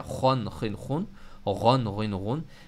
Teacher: ज़बान की जड़ जो है वो हमारे गले की तरफ अंदर की तरफ जा रही है, तो हमारा गला शुरू हो गया, थ्रोट लेटर शुरू हो गया।